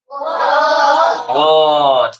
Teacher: दंतष्ट म्हणजे दात आणि ओठ यांना स्पर्श होणारा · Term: दंत्योष्ट